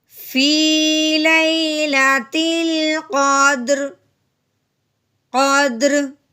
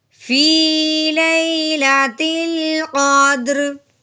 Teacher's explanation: दाल हिले भी, साकिन भी हो, रॉ भी साकिन करना है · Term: हरूफ़ कलकला